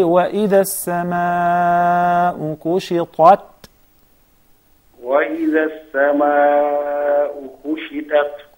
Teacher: But when you say kushitat, it seems like there are two tas. So the ta is deeper, is heavier, is one of the huruf of al-isti'la